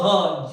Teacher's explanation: जब बोलोगे ह तो ये जो क्या कहते हैं स्वतंत्री है, ये कंपन करेगी, वाइब्रेट करेगी। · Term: स्वर तंत्रीय व्यंजन